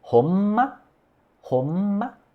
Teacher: Então tem este n antes de sons que comecem com p, b e m, né? São, é o n bilabial.